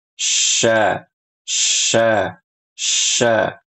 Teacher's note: huruf syin makhrajnya sama kayak jim dari tengah lidah ya yang menempel pada langit-langit atas dan makhrajnya terbuka. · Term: huruf shin